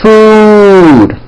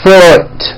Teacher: it's pronounced as ooh food okay but the word foot is also spelled with a double o but it is pronounced with a lower vowel sound or foot food foot food foot you hear that there's a